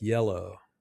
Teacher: the Y sound is a smooth gliding sound and your tongue doesn't touch the top of your mouth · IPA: /j/